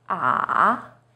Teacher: Third tone, 三声, is even lower. It first dips down, then rises.